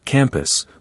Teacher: For instance, in campus, we don't emphasize both syllables equally. It becomes campus with the second syllable reduced to a short indistinct sound.